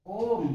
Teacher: इसमें जैसे जब हम ओम का उच्चारण करते हैं, ओम, तो इसमें 3 मात्रा, स्वर की 3 मात्रा का उच्चारण होता है और ये ह्रस्व की तुलना में इसके उच्चारण में 3 गुने समय का प्रयोग होता है, इसलिए इसे प्लुत स्वर कहते हैं।